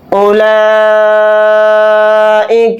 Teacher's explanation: یہاں پر اس مد کو ہم 4 الف کی مقدار کھینچ کر پڑھیں گے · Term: مد متصل